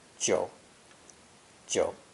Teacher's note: belongs to the third low dipping tone